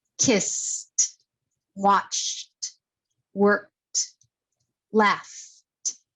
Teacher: you don't feel any movement at the end of the verb in your vocal cords.